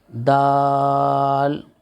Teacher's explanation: ऊपर के दांतों का सिरा और सिरा जबान मिलकर जाल अदा होता है · सिर जबान ऊपर के सामने वाले दांतों की जड़ से मिलकर दाल अदा होता है